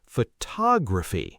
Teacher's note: The stress shifts to the second syllable.